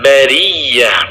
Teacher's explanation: huruf ya bertasydid, ditekan, di situ ada nabr, sehingga dibacanya bariyah, bukan bariyah tetapi bariyah.